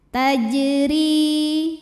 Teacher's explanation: Kemudian ada hukum qalqalah sugra. Karena ada huruf qalqalah yaitu jim yang sukunnya asli dan ada di tengah bacaan, dibacanya dipantulkan dengan pantulan yang kecil.